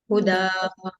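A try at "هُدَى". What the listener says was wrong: Same हुदा। Make your दाल sound lighter. हुदा।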